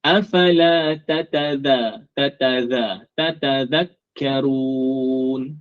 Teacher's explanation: Huruf zal ini tempat keluarnya sama dengan huruf ta. Jadi bila kita sebut ta, kita sebut zal, mesti sentuh gigi atas kita ni.